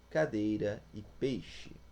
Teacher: O som é crescente, isto é, parte da vogal mais forte, a vogal, para a mais fraca, a semivogal. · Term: Decrescente